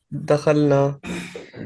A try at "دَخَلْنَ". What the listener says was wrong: دخلنا. ٹھیک ہے، اس کو نون کو لمبا نہیں کرنا، بس اس پہ کیونکہ صرف زبر ہے نا، تو دخلنا.